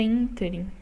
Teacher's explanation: E a pronúncia correta é ínterim, né? Então, a sílaba tônica, essa é o IN, é a antepenúltima. Então, portanto, é uma proparoxítona.